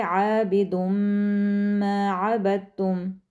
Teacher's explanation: آپ جو نون کی آواز ہے عابدن، تو وہ جو نون ہے اس کو ہم مکس کر دیں گے ان دونوں کی آوازوں میں، یعنی دال اور میم کا جو ساؤنڈ ہے اس کے اندر نون کی آواز مکس ہو جائے گی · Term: ادغام